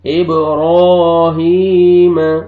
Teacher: اور یہ یا مد ہے، یا جزم سے پہلے زیر آ رہا ہے، آپ نے ہا کو کھینچنا ہے · آپ نے با پہ قلقلہ کرنا ہے، ڈبل ساؤنڈ آئے گا، را کو موٹا کر کے پڑھنا ہے